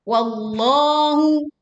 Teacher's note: huruf lam di lafdzul jalalah atau lafad Allah didahului fathah, maka dibaca tebal dengan cara mengangkat pangkal lidahnya. Wallahu, tidak diikuti bibir menjadi wawlo, tetapi wallahu a'lamu.